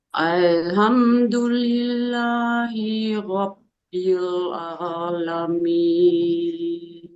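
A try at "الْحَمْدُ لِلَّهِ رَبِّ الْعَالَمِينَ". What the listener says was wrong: ada ada space ya antara hi dengan ro semestinya tidak ada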